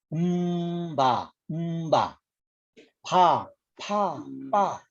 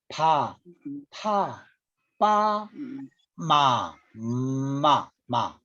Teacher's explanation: 다 이 두 입술에서 나요